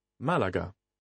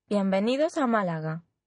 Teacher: This accent tells you that the word is an exception to the rule. Instead of stressing the penultimate syllable, you put the stress on the first syllable.